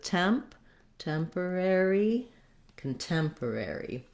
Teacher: we want this first syllable the c-o-n syllable to be very short and have a reduced vowel